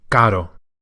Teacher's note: No need to roll the R as it's a single one. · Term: single flip